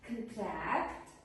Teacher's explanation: And as a verb, contract, the stress is put on the second the second syllable. So, the first syllable produces a schwa sound